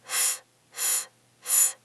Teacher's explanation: Your vocal cords don't vibrate.